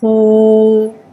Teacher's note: واو مدہ کو ایک الف یعنی 2 حرکات کے برابر کھینچ کے پڑھیں گے اور پیش کو ہونٹوں کی گلائی کے ساتھ ادا کر کے پڑھیں گے